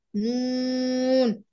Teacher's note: 9 নম্বর মাখরাজ জিহ্বার আগা তার বারবার উপরের তালুর সঙ্গে লাগিয়ে